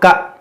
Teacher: دیکھیے یہ حمزہ ہے اور حمزہ ساکنہ ہے، اور ہم نے آپ کو پہلے بتایا تھا کہ حمزہ ساکنہ کو جھٹکا دے کر پڑھا جاتا ہے